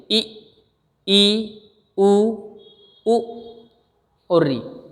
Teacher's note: वह स्वर है, आप प्रैक्टिकली बोलकर देख लीजिए, ई, उ, उ और री। इनके उच्चारण में जो हमारे मुख के खुलने की स्थिति है वह न के बराबर होती है।